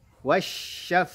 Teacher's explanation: huruf fa-nya punya sifat hamas, ya, ada nafasnya mengalir.